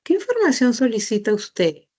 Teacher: la inflexión tonal se escucha claramente que es hacia abajo